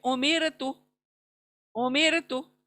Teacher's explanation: र को पतला पढ़ेंगे, बारीक पढ़ेंगे, क्योंकि र से र साकिना से पहले जेर आया है, इसलिए उसको पतला पढ़ेंगे उमिर तू।